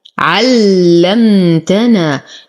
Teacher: نشد اللام نصبر على الميم لأنها ساكنة